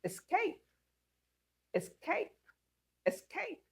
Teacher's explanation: You can see that these words are stressed in the second syllable.